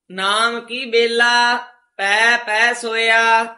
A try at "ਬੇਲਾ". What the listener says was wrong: ਬੇਲਾ ਨਹੀਂ ਕਹਿਣਾ, ਜੇ ਬੇਲਾ ਕਵਾਂਗੇ ਤਾਂ ਉਹਦਾ ਅਰਥ ਜੰਗਲ ਬਣ ਜਾਂਦਾ। ਬੇਲਾ ਸਮਾਂ ਪੋਲਾ ਉਚਾਰਨ ਕਰਨਾ।